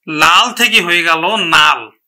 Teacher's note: এখন দেখো, লাল থেকে হয়ে গেল নাল, তার মানে একটি ল, সমবর্ণের একটি ল পরিবর্তন হয়ে এখানে কিন্তু দন্ত ন হলো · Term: বিষমীভবন